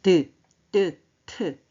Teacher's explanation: 윗 잇몸과 혀끝에서 나는 소리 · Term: 잇몸 소리